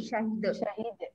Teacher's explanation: Jangan panjang hi, syahid